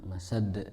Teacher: Nah, sadnya nggak panjang, masad.